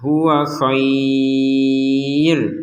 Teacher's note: Jadi kata khair ini kalau kita berhenti maka kita panjangkan.